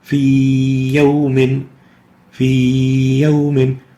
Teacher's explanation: We lengthen the pronunciation of the ya vowel for 2 units. And that's an example of natural mad.